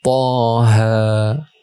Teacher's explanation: Ini mad tabi'i harfi. Dua-duanya 2 harokat.